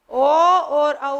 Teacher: ओ और औ का उच्चारण स्थान कंठोष्ठ।